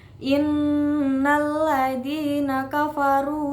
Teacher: Ada bacaan gunah musyaddadah yaitu nun ditasjidkan dengan cara bacaannya menekan dan mendengungkan selama 2 harokat